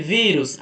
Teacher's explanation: a mais forte é o vi, que é a penúltima